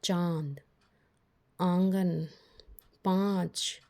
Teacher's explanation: हमारे मुख से और नाक से एक साथ ही ध्वनि निकल रही है इसी कारण से इसे अनुनासिक कहते हैं अब देखेंगे इसके बाद